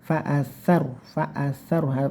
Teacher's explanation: dengan cara ujung lidahnya ditempelkan di gigi gusi yang atas atau dua gigi seri ya